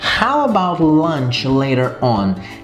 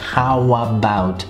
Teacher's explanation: Nesse caso nós temos a linkagem, né, a conexão desses dois sons. Ao, da palavra how, com a palavra about. Nesse caso o som A, então how about.